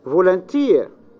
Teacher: the stress is the last syllable